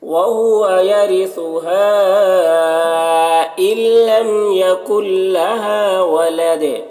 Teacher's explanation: ہا میں مد منفصل ہے، اسے 3-4 الف کے برابر کھینچیں گے